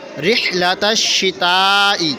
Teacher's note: تشدید ہونے کی وجہ سے شین کو 2 مرتبہ پڑھیں گے، ایک مرتبہ تا سے ملا کر، ایک مرتبہ شین اپنی حرکت کے مطابق مشدد ہے۔